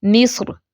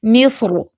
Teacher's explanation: باریک کر کے بھی وقف کر سکتے ہیں اور موٹا را ساکن بھی پڑھ سکتے ہیں